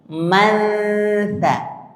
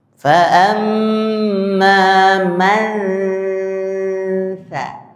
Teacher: Jadi ujung lidah sudah menempel di gigi seri bagian atas sambil didengungkan di hidung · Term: ikhfa